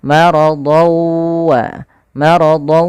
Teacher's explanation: maka dia sama seperti suara Nun yang dimatikan maka ketemu wau tanwinnya tadi hilang masuk langsung ke huruf wau · Maka ketemu waw, tanwinnya tadi hilang, masuk langsung ke huruf waw. Maka maradawa, maradawa sambil dimasukkan ke khayshum karena dia bi gunnah dengan gunnah. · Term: idgham bighunah, idgham bi gunnah